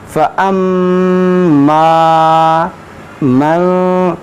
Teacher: देखिए अलिफ मद्दा है, इसको खींचेंगे